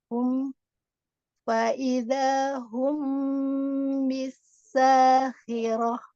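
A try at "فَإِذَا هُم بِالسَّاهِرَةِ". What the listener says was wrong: bisa. Nah, itu jangan ditarik bibirnya. Jadi nggak ada kayak orang senyum gitu.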